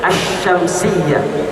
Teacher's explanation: kita tidak baca alif lamnya, terus kita idghamkan, masukkan alif lam tadi tidak dibaca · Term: alif lam syamsiyah